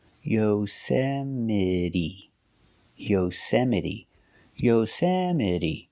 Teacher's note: The E at the end is pronounced with a long E, like green beans.